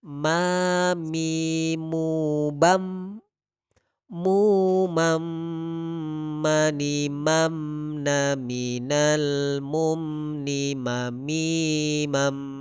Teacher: Huruf mim ini Bapak Ibu keluarnya dari paduan bibir atas dengan bawah